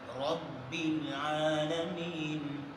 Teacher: را پر زبر ہو, را کو موٹا پڑھتے ہیں